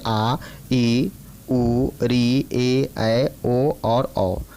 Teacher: दीर्घ स्वर, जिस स्वर में 2 मात्राओं का उच्चारण होता है